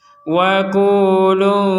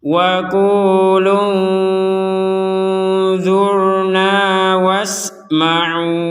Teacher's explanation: nun sukun bertemu dzot maka kita membacanya dengan samar